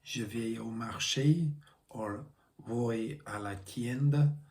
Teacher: So a sentence like Je vais au marché or voy a la tienda has a much more regular beat, with each syllable ticking along like a metronome.